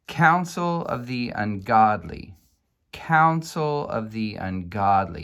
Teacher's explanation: it sounds to me like the penultimate accent is on Council